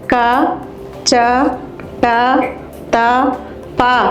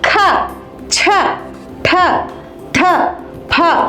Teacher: సరళాక్షరాలను క, చ, ట, త, ప అని నెమ్మదిగా పలకాలి. కానీ చెల్లెళ్ళైన మహాప్రాణాక్షరాలను ఖ, ఛ, ఠ, థ, ఫ అని గట్టిగా పలకాలి.